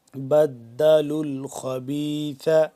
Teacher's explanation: لام مل رہا ہے آگے لام کے ساتھ، ٹھیک ہے. بیچ میں واو اور الف نہیں پڑھا جا رہا